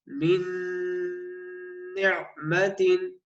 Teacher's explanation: نون کا مخرج جو ہے طرف اللسان دانتوں کی جڑ، وہاں رک کر زبان کو ناک سے آواز نکالے